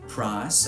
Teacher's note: price turns back into a monophthong, this time a low monophthong. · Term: glide reduction